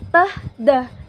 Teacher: t dan d ini nafasnya itu kita keluarkan t, d. Teman-teman bisa ngerasain ada nafas udara dari dekat mulut.